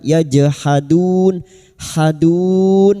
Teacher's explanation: Jim sukun yang mati asli di tengah kalimat qalqalah sugra. Jangan lupa dipantulkan. · Bi ayatina na fathah diikuti alif 2 harakat mad tabi'i. Yajhadun jim sukun yang mati asli di tengah kalimat qalqalah sugra